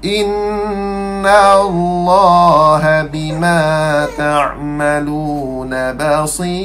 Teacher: Ra nipih sebab apa? Ya mat sebelum dia.